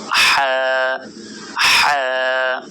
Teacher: হলকের মধ্যভাগ হতে হা উচ্চারিত হয়। হা, গলায় চাপ দিয়ে এটি উচ্চারণ করার চেষ্টা করুন, হা হা।